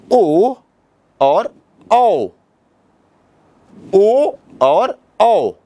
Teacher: ओ और औ इन दोनों का उच्चारण कंठ और होठ के सहयोग से होता होता है। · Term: कंठोष्ठ वर्ण